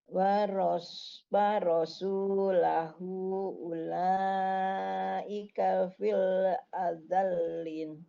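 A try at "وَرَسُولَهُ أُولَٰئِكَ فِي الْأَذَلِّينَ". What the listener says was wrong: Fil azalin. Panjangnya kurang, kita ambil yang 4 aja. Wa rosu 2 harokat. Lahu hunya panjang 4 harokat lagi. Lanya panjang lagi. Fil azal lin. Linnya juga panjang 4 lagi.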